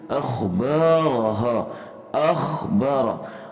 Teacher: خا کو ہم نے موٹا پڑھنا ہے، را کو بھی ہم نے موٹا پڑھنا ہے